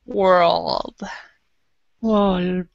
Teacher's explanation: the R is in the back of your mouth, but the L is in the front of your mouth. So that's why the tongue is moving so quickly.